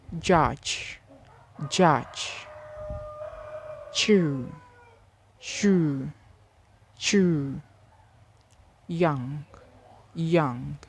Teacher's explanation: Next, palatal sounds, ja, ja, sha, and ya. These sounds are produced when the blade of the tongue, middle of the tongue, touch the hard palate.